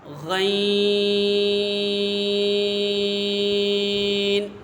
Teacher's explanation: غین یہ حرف حلقیہ ہے، اس کا مخرج ہے حلق کے اوپر والے حصے سے ادا ہوتا ہے۔